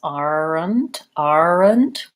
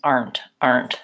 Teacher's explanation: I really condense it more and I don't have that extra syllabic schwa element